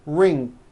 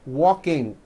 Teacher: adding a k release sound CK like that after an NG ending